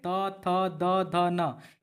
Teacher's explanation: त थ द ध न ये क्या होते है दोस्तों आपका दंत ध्वनि होती है